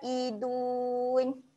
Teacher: tekan di tengah kerongkong a tekan sikit dekat Tengah kerongkong dan kita akan panjangkan bunyi huruf Ain ni sebanyak empat harakat · kita akan panjangkan bunyi huruf Ain ni sebanyak 4 harokat.